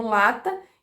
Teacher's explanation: As consoantes laterais envolvem uma oclusão no centro da boca, então você tem uma oclusão total, mas a língua se coloca de tal forma que o ar consegue passar pelas laterais da boca.